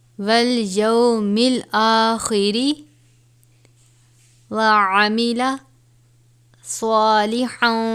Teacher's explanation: والیوم الآخر وعمل صالحا، اب یہاں پر تنوین ہے. تنوین کے بعد حرف اخفا میں سے فا آیا ہے تو یہاں پر اخفا کریں گے